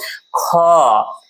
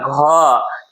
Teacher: क्यों, तो इसके अंत में क्या होते हैं, एच, इसमें ह थोड़ा सा शामिल होता है। तो महाप्राण वर्ण के उच्चारण में कौन सी ध्वनि सुनाई देती है, हकार, मतलब ह के जैसी ध्वनि सुनाई देती है